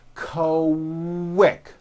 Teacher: the word quick is pronounced with a K and a strong W sound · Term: Q sounds